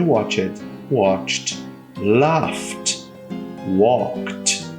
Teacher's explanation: toda vez que eu tiver uma terminação que seja desta natureza o meu Ed vai ter um som de T